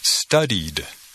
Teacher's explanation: en el pasado pronunciamos la terminación ed como d